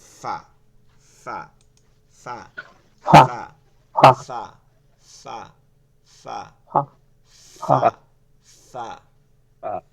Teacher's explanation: একটু ভালো করে মাখরাজটা পড়ি নিচের ঠোঁটের পেট নিচের ঠোঁটের পেট নিচের ঠোঁটের পেট সামনের উপরের দুই দাঁতের আগার সঙ্গে লাগাই